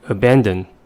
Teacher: the word has three syllables and the stress is at the second one · the vowels in the first and the third syllables reduce to the first schwa sound